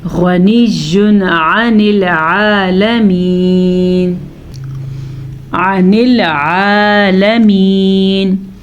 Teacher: تنوین کو ہم نے ظاہر کر کے پڑھا بغیر غننے کے پڑھا کیونکہ آگے ہمارے پاس عین حروف حلقی موجود ہے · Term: اظہار کا قاعدہ